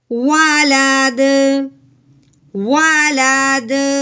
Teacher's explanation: अब जब दाल ये वक़फ़ की सूरत में साकिन हो रहा है तो अब हमने इसको क्या करना है, साकिन करते हुए हिला के पढ़ना है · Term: हरूफ कलकला